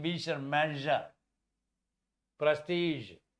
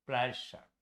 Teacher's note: The key word here is voice palatal alveolar fricatives. As in vision, measure, prestige